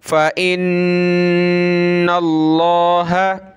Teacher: لفظ اللہ سے پہلے نون پر زبر ہے تو لفظ اللہ کو موٹا کریں گے